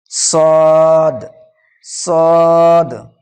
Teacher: জিভের আগা এবং সামনের উপর নিচে 2 দাঁতের আগার সাথে লাগিয়ে উচ্চারিত হয় সদ